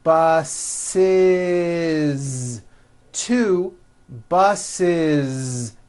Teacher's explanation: The last sound you hear is that voiced Z.